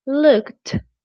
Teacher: Instead, looked, the ed sounds like a t, like really strong, looked.